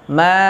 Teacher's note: Nah, seperti itu, ya. Kemudian ma, itu hukumnya mad tabi'i, dibaca panjang selama 2 harokat